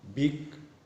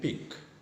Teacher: b as a voiced bilabial and p as a voiceless bilabial